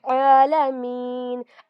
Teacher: عین پر کھڑا زبر آیا ہے، یہاں پر عین پر کھڑا زبر ہے، اس کو بھی ہم 2 کاؤنٹس کھینچ کر پڑھتے ہیں